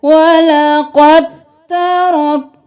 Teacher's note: وَلَقَدْ تَرَكْنَاهَا, وَلَقَدْ نہیں کرنا, دال چھوڑ کر ہم نے قاف کو تا کے ساتھ ملانا ہے